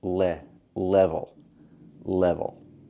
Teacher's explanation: It's not level. We cannot use the A sound like black cat. We need to use the E sound like red and 10. It's more closed.